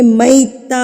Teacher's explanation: یہ گولتا وقف کی صورت میں گول ہاں میں تبدیل ہو جاتی ہے